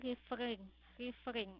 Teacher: Dua suku kata dan penekannya terdapat pada suku kata terakhir.